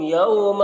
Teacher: یوما میں واو جو ہے یہ واو لین ہے، اسے نرم آواز کے ساتھ جلد پڑھنا ہے